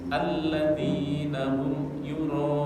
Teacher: U-nya 2 harokat, ro-nya 5 harokat. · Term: mat wajib muttasil